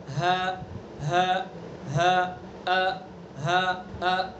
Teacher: حمزہ ہا اقصائے حلق یعنی حلق کا آخری سینے کی طرف والا حصہ